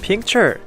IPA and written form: ˋpɪktʃɚ (picture)